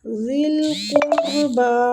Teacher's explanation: قاف مستعلیہ حروف ہے، با کو کھینچیں گے کھڑی زبر کی وجہ سے۔